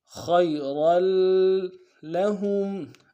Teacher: خا کو موٹا ادا کرتے ہوئے یا کے ساتھ ملائیں گے، یا لین بغیر کھینچے پڑیں گے ، را کے تنوین کو آگے لام کے ساتھ ملانا ہے،